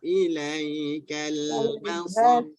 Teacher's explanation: Ba tu lagi rendah. Lentangkan lagi. Jangan terpengaruh dengan sad.